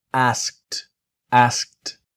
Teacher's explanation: So, a s k e d. But the e d has a different sound. It has a t sound.